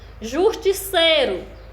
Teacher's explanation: a sílaba é o sei, é a de maior intensidade, ou seja, a de maior força. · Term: sílaba tônica